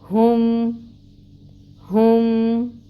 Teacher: ہا اقصی الحلق سے نکلے گا۔ اس کے اوپر دمہ پیش 1 کاؤنٹ، اور اس کو میم کے ساتھ ملائیں گے، ہم عین وسط حلق سے نکلے گا۔